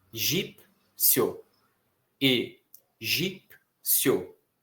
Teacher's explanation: Formado pela semivogal I, que é mais rapidinha na hora da pronúncia, e pela vogal O. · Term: ditongo crescente